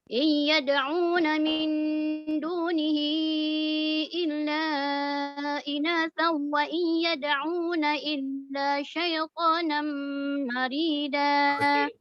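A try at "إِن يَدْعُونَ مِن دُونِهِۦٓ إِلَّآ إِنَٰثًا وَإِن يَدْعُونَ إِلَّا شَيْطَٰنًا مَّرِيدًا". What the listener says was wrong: Yang tak dengung tu betul, cuma yang panjang tu tak cukup lah. Tak cukup 6 harakat. Panjangkan 6 harakat.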